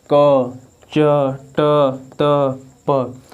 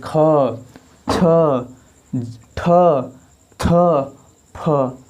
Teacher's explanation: जबकि महाप्राण को आप बोलेंगे तो आपके मुख से अधिक वायु निकलेगा